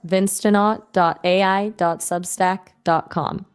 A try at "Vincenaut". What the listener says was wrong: No, you're saying Vince Stonaut. You're saying Vince Stonaut. That's incorrect. It's Vince Sonaut.